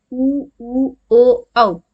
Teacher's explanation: पश्च स्वर, जिनके उच्चारण में जीभ का पिछला हिस्सा, जड़ वाला हिस्सा हमारे काम करता है। ऊ ओ औ, प्रेशर पड़ता है हमारे कहाँ पे, टंग जहाँ हमारी जुड़ी हुई होती है।